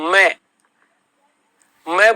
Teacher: होट आपस में स्पर्श भी हो रहे मैं और नाक में कंपन भी हो रहा है